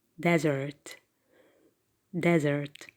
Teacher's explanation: And the stress is on the first syllable. It is not on the second. Because if you stress in the second syllable, you are going to change the meaning.